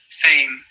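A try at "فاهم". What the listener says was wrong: Good, but I don't really hear the H there. Fame. Fahim. Like an English H in here, for example.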